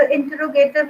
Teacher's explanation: The primary stress is on the third syllable if we count from backward.